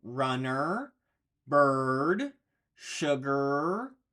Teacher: we have the UR sound we have that mouth placement with the r built in